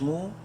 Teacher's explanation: 3 الف کے برابر لمبا کر سکتے ہیں میم کو مد کی وجہ سے